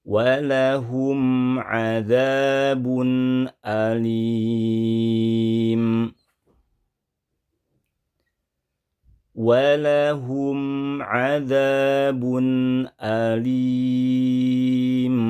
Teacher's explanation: Mim sakinah, mim sukun yang dibaca dengan hukum izhar syafawi, praktiknya kurang lebih mimnya harus terdengar dengan jelas dan tidak dipanjangkan, tidak ditahan lama